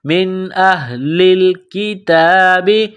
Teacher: من اہل الکتاب، حمزہ کو ہا کے ساتھ ملانا ہے، یہ چشمے والی گول ہا ہے، صرف منہ سے ہوا نکالنے کی طرح اس کو پڑھیں گے